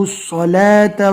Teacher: صاد کو پور پڑھنا ہے اور واو کو چھوڑ دینا ہے، واو کو نہیں پڑھنا